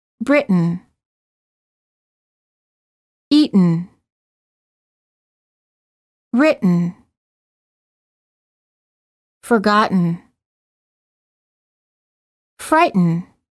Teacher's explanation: hold the t as in but and then add an N without releasing the tongue from the gum Ridge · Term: held T